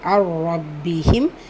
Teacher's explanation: நூன் சுகூன் தொடர்ந்து letter ரா வந்திருக்கு இதுகாம் பிலா குன்னா இணைக்கணும் ஆனா குன்னா செய்யக்கூடாது